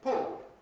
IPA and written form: pɔo (pool)